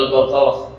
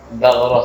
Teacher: Pangkal lisan dan langit-langit lunak belakang. Yang lebih dekat ke tenggorokan. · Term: qaf